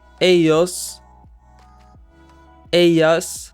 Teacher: in most accents, the double L sound is pronounced like the Y in the word yellow